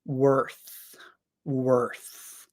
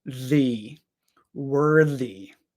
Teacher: the th in worth is the unvoiced th worth however in worthy now we have the voiced th